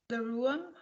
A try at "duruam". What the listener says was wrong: Duruam, there is an U. Duruam.